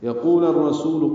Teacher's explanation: لمبا کریں گے، یقول الرسول قاف پر ہے، واو مدہ ہے، لام کی زبر کو را سے ملا دیں گے، را پر پڑھیں گے، ادغام شمسی ہو رہا ہے